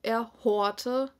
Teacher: kein Ö sondern ein langes o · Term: rückumlaut